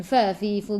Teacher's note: gigi atas menyentuh perut bibir bawah